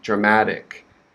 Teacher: i'm american so that t in dramatic it's very it's very soft it sounds like a d